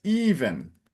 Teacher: And the second line, remember, it's not Evan, it's even. So a strong open E at the beginning